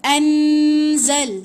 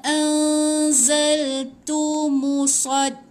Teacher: Lepas tu jangan sebut tepat pada nun, jangan jelaskan nun, jangan baca jangan baca anzal, salah. Jangan jejakkan hujung lidah tu dekat lelangit nun tu. Gantung sikit, bersedia sebut huruf zai. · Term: ikhfa hakiki